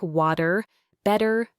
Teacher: it frequently softens to a quick almost fleeting D sound